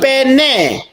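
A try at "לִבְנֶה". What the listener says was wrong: Nah, betul bukan lipene, livne karena ini nggak ada dagesnya di tengah. Ya ampun, ini nggak ada dagesnya. Kalau ada dagesnya baru dibaca P.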